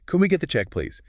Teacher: And again, that delivery matters. A little smile, maybe a slight upward tone at the end.